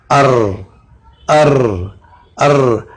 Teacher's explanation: जबान का हिस्सा बिल्कुल अनियाब को टच ना हो और बीच में हवा आ जाए तो वहां से हरफे रा का मखरज बनेगा